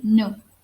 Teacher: alveolar, which is articulated by the tip of the tongue against the teeth ridge